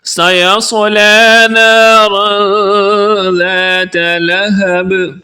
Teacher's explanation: سیصلی صاد کو پر پڑھیں گے، نارن کی را کو بھی پر یعنی موٹا پڑھیں گے۔ نارا ذات، یہاں پر اخفا ہو رہا ہے، آواز کو ناک میں چھپا کر پڑھیں گے۔